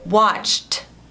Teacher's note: Não vibra. Então, você colocaria o ED no final, mas você falaria som de T